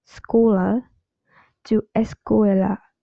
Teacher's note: It involves the addition of a sound to the beginning of a word and is called prothesis.